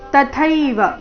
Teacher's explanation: ತ ಅಲ್ಪಪ್ರಾಣ ಮುಂದೆ ಥೈ ಮಹಾಪ್ರಾಣ